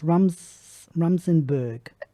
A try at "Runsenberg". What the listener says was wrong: Runsenberg. With an N. Runsenberg.